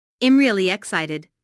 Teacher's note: Notice the emphasis on really. Really is used to emphasize the adjective excited here.